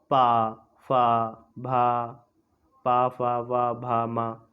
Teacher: ओष्ठीय। जो हमारे होठों से आवाज़ निकलती है, यानी हमारे होठ स्पर्श होते हैं